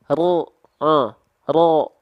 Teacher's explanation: huruf ro itu dilafalkan dari punggung lidah di sini nih di sini ya ya maka ujung lidahnya enggak